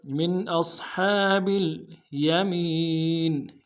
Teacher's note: ہے، یہاں پہ اظہار ہوگا، حمزہ کو صاد کے ساتھ ملانا، صاد کو موٹا ادا کریں گے ، ہا کے اوپر کھڑا زبر ہے ایک مقدار میں کھینچیں